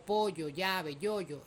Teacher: Luego la fricativa palatal sonora, que es la Y, con la que representamos sonidos como pollo, llave, yoyo, es decir, todo lo que se escribe con el Y o Y se representa con esa especie de J con un rabito hacia adentro.